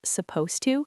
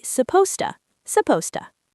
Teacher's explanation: we almost never pronounce the heavy D and T sounds. We just smash them completely together and say supposed to, supposed to.